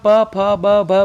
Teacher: जैसे हम प, फ, ब, भ बोलते हैं तो दोनों होठ आपस में टकरा कर इनका उच्चारण होता है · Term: प वर्ग